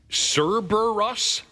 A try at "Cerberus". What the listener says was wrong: Uh, no, that's not an S.